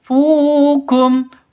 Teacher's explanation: Qafu, fu panjang 2 ketukan karena ada waw mati diawali dengan dhammah. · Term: mat tabi'i